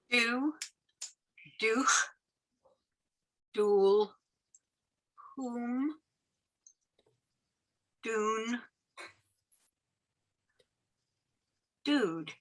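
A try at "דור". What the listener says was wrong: No, that's a Resh at the end. Yeah, no, that's the trick So door.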